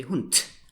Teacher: So you spell it with a D, but you speak it with a T. You automatically change this voiced D to an unvoiced T. Of course, this is exaggerated a little here for the sake of clarity.